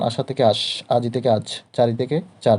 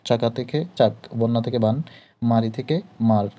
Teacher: শব্দের শেষে বা অন্তে স্বরধ্বনি লোপ পেয়ে যায়, হারিয়ে যায় বা থাকে না। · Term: অন্তঃস্বরলোপ